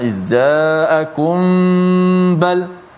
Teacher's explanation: Yang pertama, mim jumpa dengan ba, ikhfa syafawi.